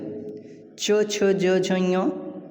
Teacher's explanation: च छ ज झ ञ तालु से होते हैं, इसे तालव्य व्यंजन कहते हैं।